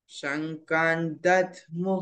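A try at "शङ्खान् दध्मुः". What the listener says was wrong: शंख से ख.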